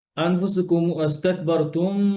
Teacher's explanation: কিন্তু এই যে এখানে আনফুসুকুম আস্তাকবারতুম, গুন্না হবে না, এটা তো সব কোরআনে একই নিয়ম। মিম সুকুনের পরে ফা আসছে, গুন্না নাই, এটা মিম সুকুনের ইজহার। গুন্না নাই।